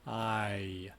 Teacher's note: the the end of the diphthong so you have I and this actually has a long e bit at the end which isn't typical